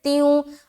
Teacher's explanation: 2 زیر کی تنوین کے بعد واو ہے, تو یہاں پر پھر ادغام ناقص کا غنہ کریں گے